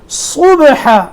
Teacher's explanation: صاد کے بعد با ہے، صاد موٹا ہے، با میں قلقلہ